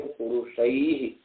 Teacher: तो अ का स्थान है कंठ, ऐ का स्थान है कंठ और तालु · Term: कंठ तालव्य